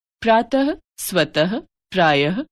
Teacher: विसर्ग। विसर्ग अह का उच्चारण ह व्यंजन के रूप में किया जाता है